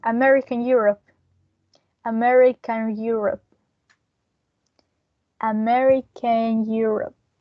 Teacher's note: we are going to link these two words together including these intrusive r